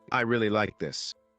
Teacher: with stress on really, it shows excitement · If you say, "I really like this," with stress on like, it sounds more sincere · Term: word stress